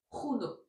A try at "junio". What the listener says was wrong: Junio. Il est où le i?